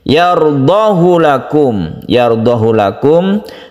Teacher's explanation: Di mana menurut definisi, ha ini adalah ha damir yang diapit oleh dua vokal, tetapi dibaca pendek